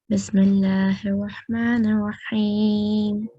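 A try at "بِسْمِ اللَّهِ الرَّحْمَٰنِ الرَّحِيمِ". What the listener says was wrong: جلدی نہ کریں, ایسے جیسے پہلے بسم اللہ بھی ویسے ہی پڑھیں.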